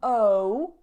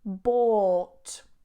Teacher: So be really careful because a lot of people get a little bit distracted by the spelling and they pronounce it like boat. But this is not a diphthong. It's not o, but it's or.